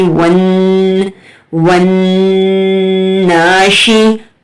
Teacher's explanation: اور یہاں پر غنہ زمانی ہوگا، جو زبان ہے آپ کی تالو کے ساتھ چپک جائے گی